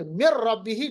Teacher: بلا غنہ، کیونکہ مر ربہ جیسے کہ نون ہے ہی نہیں